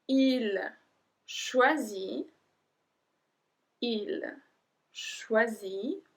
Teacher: we don't pronounce the T